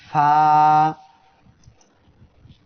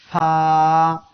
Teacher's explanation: সবাই আমার সাথে পড়েন ফা। ফা অক্ষরটি উচ্চারণ হবে নিচের ঠোঁটের পেট উপরের 2 দাঁতের আগার সঙ্গে লাগিয়ে। ফা 1 আলিফ টান হবে।